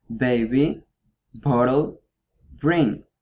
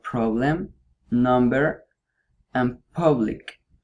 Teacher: you use both of your lips to block your mouth